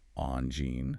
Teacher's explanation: You start with on, the soft nasal sound, followed by gene, using a soft G like the beginning of the word vision.